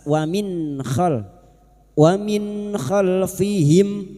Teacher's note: nun sukun bertemu k idhar halq nun sukun dibaca jelas tanpa mendengung